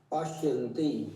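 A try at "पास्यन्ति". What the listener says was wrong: ये श नहीं है, ये स है, दंत्य सकार, पास्यति।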